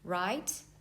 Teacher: The second tone is a rising tone. So you can hear this tone when you ask these questions in English.